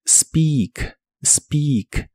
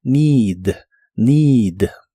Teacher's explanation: La doble e de esta palabra también se pronuncia como una i larga o doble